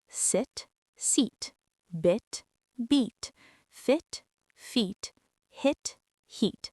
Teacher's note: The short I is quick and relaxed. The long e is tense and extended.